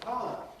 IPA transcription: ˈpaʊə